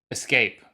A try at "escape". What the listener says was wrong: Yeah, it's not escape. It's escape. Escape. There's no X. It's not escape.